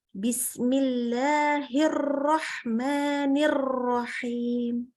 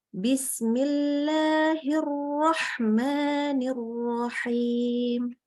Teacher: Untuk huruf ro itu betul-betul kita jaga ada penahanan terhadap takrir. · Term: Getarannya lembut